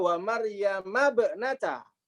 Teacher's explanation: Ibnah di sini hamzahnya hamzah wasol, sehingga dibacanya wa Maryama bnata.